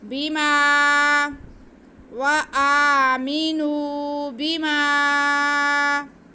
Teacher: ایک لفظ کے اینڈ میں حرف مدہ اور دوسرے کے شروع میں حمزہ آ رہا ہے، تو یہاں پہ ہم مد کریں گے، مد منفصل، اسے ہم 4 الف کے برابر کھینچیں گے۔ وآمنوا بما مد نہیں کھینچی جاتی، بلکہ جس حرف میں مد آ رہی ہو وہ حرف کھینچا جاتا ہے، جیسے اب میم کے ساتھ الف ہے تو یہاں پہ مد آ رہی ہے کیونکہ آگے حمزہ آ رہا ہے، ہم میم کو کھینچیں گے۔